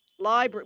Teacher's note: we dropped the first r